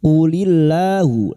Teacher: lam jalala yang didahului kasr dibaca tarkik atau tipis